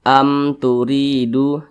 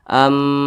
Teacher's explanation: huruf mim maka semua nama hukumnya adalah izhar syafawi izhar syafawi karena dia izhar maka dibaca jelas tidak berdengung